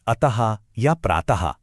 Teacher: विसर्ग एक ऐसी आवाज है जो हमेशा किसी स्वर के बाद ही आती है और इसका उच्चारण लगभग ह जैसा होता है। जैसे कोई गूंज हो। · इसकी आवाज को महसूस करने के लिए इन शब्दों को देखिए, जैसे अतः या प्रातः। ध्यान दीजिए कि शब्द के आखिर में एक हल्की सी हा की सांस जैसी आवाज आती है।